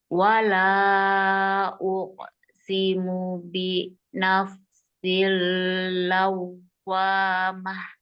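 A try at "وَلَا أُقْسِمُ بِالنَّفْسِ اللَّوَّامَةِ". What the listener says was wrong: Wala uqsimu bin nafsil lawwamah. Bin nafsil bin, jangan lupa ini. Nanti jangan lupa dirinya pastikan nun tasydid tenggung. Tadi lupa lagi.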